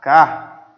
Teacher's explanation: é uma paroxítona, porque a mais forte é a penúltima